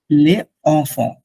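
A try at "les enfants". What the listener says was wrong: লে জফন বলবো ওই যে এস ই লে জফন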